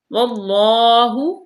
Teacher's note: اللہ کے لام کو پر پڑھا جائے گا